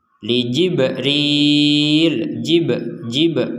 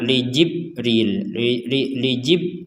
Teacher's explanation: ba sukun ya Ba yang bertanda sukun ini maka kita membacanya dengan pantulan